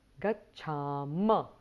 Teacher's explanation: So, gacchamaha of the present tense becomes gacchama, where there is no aspirate or the visarga sound at the end.